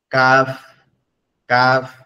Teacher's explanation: জিহ্বার গোড়া হতে একটু আগে বাড়ায়া উপরের তালুর সঙ্গে লাগে, হালকা আওয়াজ হবে, ঠিক আছে? উপরের তালুর সঙ্গে হালকা লাগবে, লেগে হালকা স্বরে বলবে কাফ কাফ।